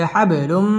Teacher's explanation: বা কলকলার হরফ ধাক্কা দিয়ে পড়তে হবে